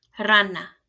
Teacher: The beginning of a word, the letter R is a rolled R